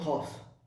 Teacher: Eh bien, quand on dit qaf, eh bien, c'est la racine de la langue qui monte et on touche en haut. Mais en haut, derrière la bouche.